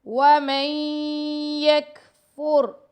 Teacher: ومن یہ کاف پر ہم ہمس کر رہے ہیں